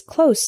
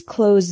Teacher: the word close with the Z sound is a verb